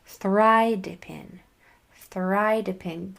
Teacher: I accented that first syllable